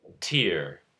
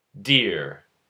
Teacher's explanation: T and D are both alveolar stop consonants. T is unvoiced, D is voiced.